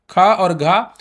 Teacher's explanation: प्रत्येक वर्ष का वर्ग का पहला तीसरा पांचवा अक्षर जैसे क ग और य र ल व ये अल्पप्राण होते हैं। महाप्राण की बात करें तो उच्चारण में अधिक हवा निकलती है